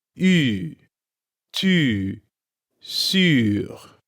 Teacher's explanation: The vowel in sûr is that special French U from du and tu. Remember, you make this by making the E sound and puckering your lips.